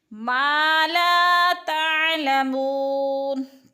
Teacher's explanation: ما لا تعلمون، تعلمو کی جو وہ ہے ادھر وہ مدہ ہے، وہ ساکن سے پہلے میم کے اوپر پیش ہے تو وہ مدہ یعنی ایک الف کے برابر کھینچ کر پڑھنا ہے